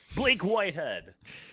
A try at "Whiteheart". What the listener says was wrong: Wait, Hart, wasn't it?